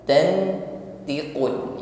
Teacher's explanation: pengucapan nun sukun bersiap pada huruf th ya diiringi dengan dengung dengungnya ditebalkan · nun sukun kita samarkan pada huruf th ya diiringi dengan bunyi dengung pengucapan nun sukun bersiap pada huruf th ya diiringi dengan dengung